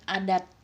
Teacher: T pada adat lebih meletup karena di akhir kata.